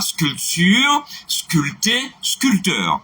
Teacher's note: Donc, dans tous ces mots, le P ne se prononce pas.